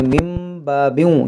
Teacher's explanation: इक़लाब का कायदा लगेगा, नून साकिन के बाद बा है, इस मीम को पढ़ेंगे, इसको पढ़ेंगे मिम बाबिन.